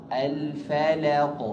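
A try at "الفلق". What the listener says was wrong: Lamnya jangan tebal.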